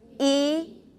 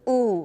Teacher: e is front and oo is back